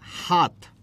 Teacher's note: ত হচ্ছে অল্পপ্রাণ আর থ হচ্ছে মহাপ্রাণ হাতের তর জায়গায় আমরা উচ্চারণ করছি থ